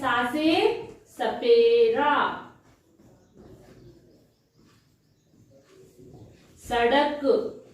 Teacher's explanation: इसका उच्चारण करते समय जो हमारी जीवा है वो यानी कि जो हमारी जीव है वो दांतों को स्पर्श करती है इसलिए हम इसे दंत सा कहते हैं